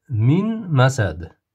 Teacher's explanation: Nunni mimga kirgizib demoq bilan o'qiymiz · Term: G'unnali idom